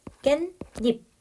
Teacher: 니은 니은이 덧나서 깬닙 요렇게 발음이 난다는 거